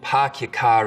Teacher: we call this the start vowel in boston it's usually pretty fronted